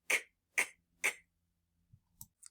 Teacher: So, the way we make the C- sound is it happens in the back of our mouth, you have your tongue at the back of your mouth and it's a stop sound, meaning we can't stretch it. So, our voice is off for this sound. · we're not going to feel it vibrating because it is an unvoiced sound. So, and we are using our tongue in the back of our mouth.